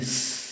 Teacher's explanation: 시옷의 발음이 스 이런 식으로 좁은 틈을 통해서 마찰을 통해서 소리가 나죠. 이게 마찰음이에요.